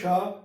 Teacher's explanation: श बोलते समय आपकी जो जिह्वा है तालु के किसी भी भाग में टच नहीं करती और बिल्कुल पास जाकर के संघर्ष करती हुई हवा निकलती है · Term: ऊष्म व्यंजन